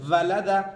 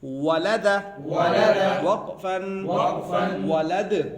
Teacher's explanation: واو کی ادائیگی کیسے ہوگی؟ ہونٹوں کی گولائی سے